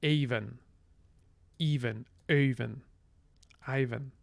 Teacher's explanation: fricatives have allophonic intervocalic voicing. So when you see an F in between vowels, it's pronounced as a V.